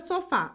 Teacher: a palavra sofá a última sílaba tônica e é terminada em A então é uma oxítona Parabéns última